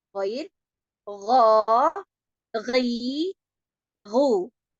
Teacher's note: Nanti pada pengucapan huruf ghain dia akan lebih dalam letaknya daripada pengucapan huruf kha, karena huruf kha ini lebih dekat dengan huruf qaf ya.